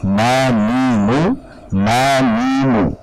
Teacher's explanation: saat berharokat sekalipun kita mengucapkan nun dan mim tersebut ada bagian dari al-khayshumnya, ya, juz'ul khayshumi. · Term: aslul gunnah